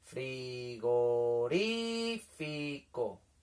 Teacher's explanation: El que suena más fuerte es ri, ¿verdad? Pues esa sería la sílaba tónica